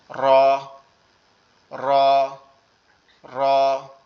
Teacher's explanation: এরপরটা হচ্ছে র, জিহ্বার আগার উল্টা পিঠ, জিহ্বার আগার উল্টা পিঠ, মানে এই যে জিহ্বাটা আছে এটার উল্টা পিঠ, এই পিছনের পিঠটা এটা উপরের তালুর সঙ্গে লাগবে, লেগে একটু কম্পন মতো আওয়াজ হবে র র র, এরকম ভাবে।